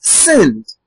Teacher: In sinned, which was the word I read, the ed now produces an effect where the e is not heard. This is referred to as a voiceless vowel.